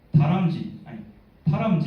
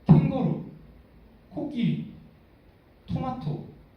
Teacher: 다람쥐의 람보다 코끼리의 키가 훨씬 더 높다